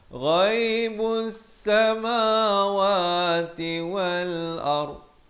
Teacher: ghaib di hujung kerongkong.